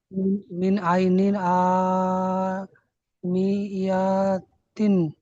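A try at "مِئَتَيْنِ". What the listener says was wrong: ইয়াটা টান হয়ে গেছে, এটা হারাকাত তাড়াতাড়ি হবে, ঠিক আছে।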